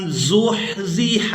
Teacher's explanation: ہا کو اس کے مخرج سے یعنی حلق سے اچھی طرح سے ادا کریں گے.